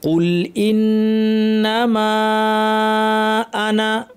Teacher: আর এখন যেহেতু আপনি মিলিয়ে পড়ছেন উপরে ঢেউ আছে একটু লম্বা করে টানেন ইন্নামা আনা এখানে আনা শব্দের আলিফটা টানবেন না